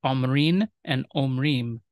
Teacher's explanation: We have the different vowels, all long A in Aramaic for the participle, versus a holam, O in Hebrew